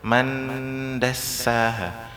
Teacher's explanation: nun sukun bertemu dal, nun sukunnya dibaca di huruf dal.